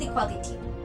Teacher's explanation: Uncountable noun, 8 letters, 4 syllables, and the stress on the A.